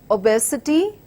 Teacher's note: starts with the schwa unstressed completely then with our stressed syllable B and followed with unstressed syllables with an unstressed syllable again so